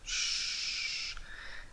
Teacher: otras variaciones también del sonido S, en este caso aspirado, como si fuésemos a mandar silencio. · No se dice tion, sino shon. Se trata de una S sorda aspirada.